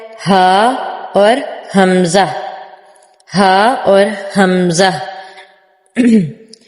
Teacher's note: यह दोनों ही सीने की तरफ से निकलते हैं तो सीने की तरफ प्रेशर फील होता है।